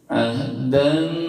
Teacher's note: Karena tanwin bertemu huruf nun, ya, dibaca dengung. Ahdan. Terus nabadahu, hu-nya panjang 2 ketuk 2 harokat, itu mad sillah qasirah. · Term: idgham bi gunnah